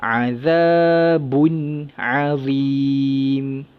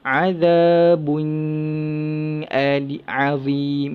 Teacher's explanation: Nun tu dibaca dengan izhar halki. Tanwin tu dibaca dengan izhar halki, iaitu jelas, nyata dan terang. Tidak ada dengung, tanpa dengung.